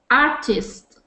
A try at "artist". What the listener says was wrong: Good. That was a lot better.